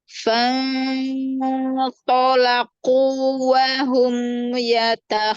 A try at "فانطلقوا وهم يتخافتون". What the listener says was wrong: Qaf, makharijul huruf qaf dekat dengan huruf kaf. Ya, kalau masih ada hamesnya berarti masih tercampur dengan huruf kaf. Mundurin lagi, ya, alisannya, lidahnya, ya, di pangkal lidah bagian atas.